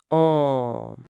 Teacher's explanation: La bouche s'ouvre beaucoup plus large, la mâchoire se relâche vers le bas, toujours avec la résonance dans le nez, un son profond.